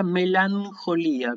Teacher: Así que esto se pronuncia melancolía con N, o sea que la combinación, recuerden, gamma ji se pronuncia NJ